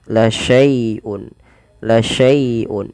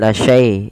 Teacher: dilembutkan karena dia ada ya sukun yang didahului dengan fathah, karena di sini bacaan lin, maka dia lembut.